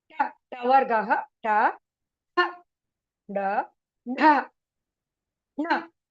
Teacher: Tavargaha, the tongue rolls up onto the hard palate.